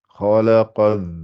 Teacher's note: il y a kha qui est gonflé, le lam n'est pas gonflé et le qa est gonflé. Donc c'est wa ma khalaqa.